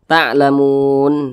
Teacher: Mad arid li sukun panjangnya itu boleh 2 harokat, boleh 4 harokat hingga 6 harokat, boleh 2 ketukan, 1, 2, boleh 4 ketukan atau kira-kira 4 harokat atau kira-kira 4 ketukan, boleh 6 harokat atau kira-kira 6 ketukan.